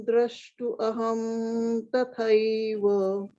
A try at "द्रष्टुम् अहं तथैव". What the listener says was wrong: द्रष्टुम अहम तथैव. द्रष्टुम. आपने द्रष्टु.